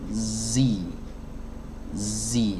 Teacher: desis pada huruf zai tidak disertai aliran nafas. Ya, kalau disertai aliran nafas maka dia akan berubah menjadi huruf sin.